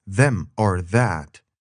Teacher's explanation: it's a buzzing sound made with your tongue against your upper teeth